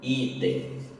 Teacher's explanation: A palavra item, o i também é forte, é paroxítona.